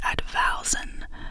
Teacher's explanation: The word is pronounced Advowson, with a stress on the second syllable.